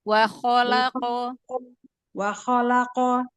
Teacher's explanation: Kho tebalkan ya, karena kho itu huruf tebal. Kadang-kadang kita lupa tuh huruf kho dengan ghoin, bahwa itu huruf tebal, jadi angkat pangkal lidahnya.